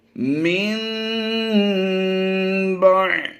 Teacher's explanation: ہمیں پوچھا یہ گیا ہے کہ یہاں پر نون ساکن کو ہجوں میں پڑھیں گے، لیکن رواں پڑھتے ہوئے ہم نے میم کی آواز دینی ہے۔